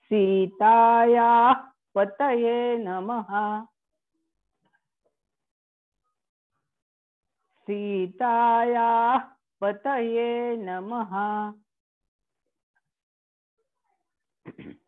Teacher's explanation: सीताया पुढे विसर्ग आहे म्हणून सीतायाचा पूर्ण उच्चार आणि मग विसर्गाला आघात द्यायचा. सीताया म्हणजे पूर्ण पुढे नेऊन मागे यायचं म्हणजे तो आघात करेक्ट येतो.